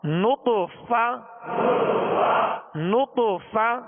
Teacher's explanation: اوپر کے سامنے والے دو دانتوں کے کنارے اور نچلے ہونٹ کا تر حصہ، اس سے ادا ہوتا ہے فا،